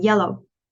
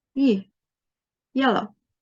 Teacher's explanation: it's a voiced consonant. It's also an approximant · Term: y sound